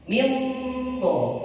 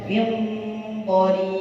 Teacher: suaranya terdengar tetap n, tapi itu sebenarnya n-nya itu persiapan dotnya.